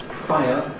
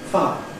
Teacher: very commonly in Received Pronunciation (RP), it’s said not as [ˈfaɪə] but as [faə] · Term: smoothing